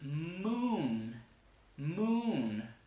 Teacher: La vocal sale así larga porque la vibración de la consonante hace que se alargue.